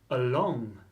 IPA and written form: əˈlɒŋ (Along)